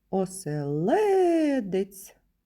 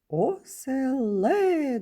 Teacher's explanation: на третій склад третій склад наголошений